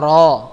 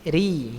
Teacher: Kalau tipis jadi ri ya, dagunya agak turun ya. Ro agak menekuk punggung ujung lidahnya. Kemudian ri ya, tipis dengan ditandai dagu kita turun.